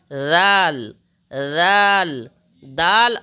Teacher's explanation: जबान को ऊपर की दांत से मिलाकर के फिर अदा करेंगे